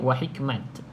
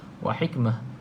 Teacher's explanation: Dia tak bunyi ta dekat sini. Sebab dia ta yang bulat ni bunyi macam huruf ha.